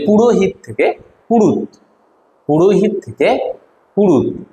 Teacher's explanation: এখানে মাঝখান থেকে যে হটা ছিল সেই হটা আর এখানে নেই, তাই এটা মধ্য ব্যঞ্জনা লোপ।